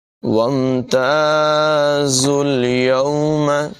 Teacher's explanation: وَامْتَازُوا الْيَوْمَ، یہاں پر تا کے بعد الف مدہ ہے، تا کو لمبا کر کے پڑھیں گے، زا کی آواز میں سیٹی پیدا کریں گے، اور زا کے بعد واو اور الف جو لکھا ہوا دکھائی دے رہا ہے اسے نہیں پڑھا جائے گا، بلکہ زا کو ڈائریکٹ لام کے ساتھ ملا کر پڑھیں گے۔